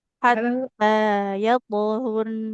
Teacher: rnya dia mengalir suaranya. Tapi memang sebentar ya.